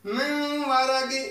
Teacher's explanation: نون ساکن کے بعد واو آ گیا تو ہم غنہ کریں گے